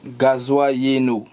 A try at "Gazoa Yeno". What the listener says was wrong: Oh non, disons que tu l'as prononcé à la française. Voilà, parce que c'est écrit en français. Parce que tu l'as prononcé en français, beaucoup d'efforts. Parce que le français n'aurait pas réussi à prononcer comme les BT.